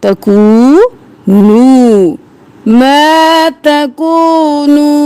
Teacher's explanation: زبر الف ما، الف مدہ ہے تو کھینچیں گے، اینما تکونو، واو مدہ دونوں کو ایک الف کے برابر کھینچیں گے